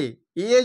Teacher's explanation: এ যখন উচ্চারণ করছি তখন জীবটা একটু ভেতর দিকে যাচ্ছে, এ জীবটা ভেতর দিকে একটু চলে যাচ্ছে, মানে পিছনের দিকে।